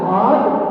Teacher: ketika kita mengucapkan qad pasti berpantul itu namanya qalqala